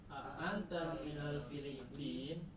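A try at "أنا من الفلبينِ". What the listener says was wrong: Filipin. Nah, tidak boleh Filipin. Ini nun harokatnya apa? Filipin, ya-nya mati, nunnya mati. Nah, itu tidak boleh. Harus jelas ya. Kalau dalam percakapan silahkan disukunkan, tapi kalau lagi belajar teori harus jelas. Filipini, Filipinu, Filipina. Filipini ada min di situ, ya ada min di situ, huruf jar ya.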